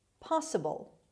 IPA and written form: ˈpɑːsəbəl (possible)